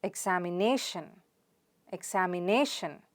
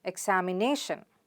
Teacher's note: It's na. So the stress is on the na sound.